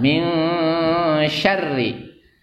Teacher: harus dibaca gunnah atau dengung. Jangan males-males, ditahan 2 ketuk 2 harkat. Min syarri, jangan min syarri, jangan 1 ketuk, ya, tidak boleh, ya.